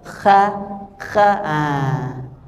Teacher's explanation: Jadi ada seperti kotoran gitu, seperti getaran pada atas tenggorokan. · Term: huruf kha